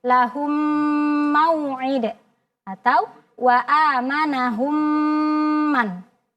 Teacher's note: Jadi seolah-olah ada tasydid. Nah, kadarnya kita sempurnakan bunyi mimnya, kemudian dengungkan, disertai dengan dengung. Dengung itu adalah kadar gunnahnya kita lamakan. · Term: al-idgham